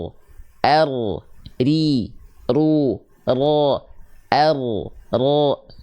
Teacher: Jadi getarannya sedikit tapi walaupun sedikit tetap tegas lugas dan jelas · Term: takrir